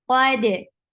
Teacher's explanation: Qaf is heavy. Dal is light. Dal will get sifa of qalqala.